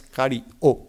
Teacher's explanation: un sonido oclusivo intervocálico considerado una consonante en la gramática actual, que consiste en una pausa del sonido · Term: pausa glotal